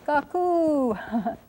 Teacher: we probably make an extra long U on that one, and we accent the second syllable